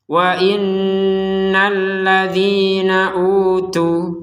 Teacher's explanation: Tapi kalau darurat misalkan nafas gak kuat, berhentinya di utu. Kalau berhenti di utu, maka tu-nya ini panjangnya dua harokat.